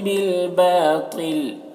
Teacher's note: بالباطل، با میں الف مدہ ہے، اسے ایک الف کے برابر کھینچیں گے، تو کو پر پڑھیں گے اور یہاں پر وقف کریں گے تو لام کا زیر سکون سے بدل جائے گا